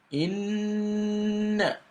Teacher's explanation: you've got to pronounce the rule of shadda on the nun plus a gunna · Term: nun mushaddada